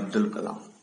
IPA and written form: ˈɑːbdəl kəˈlɑːm (Abdul Kalam)